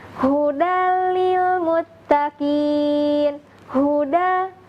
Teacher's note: huruf H seperti itu kemudian di dalam pembacaan kata Huda dan demikian kata Huda hanya berasal dari bagian pangkal tenggorokan